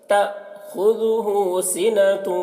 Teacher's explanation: حمزہ ساکنہ ہے تو اس کے پڑھنے میں جھٹکا ہوگا